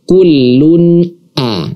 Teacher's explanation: huruf hamzah a ya kita kita ulangi kembali bahwa ilhar adalah nun mati ya kemudian tanwinnya itu kita baca jelas tidak kita samarkan apalagi kita dengungkan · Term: izhar